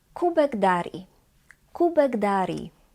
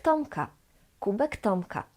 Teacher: the last K in the word kubek becomes G, its voiced equivalent. Why? Because the first letter of the word Darii, D, is voiced.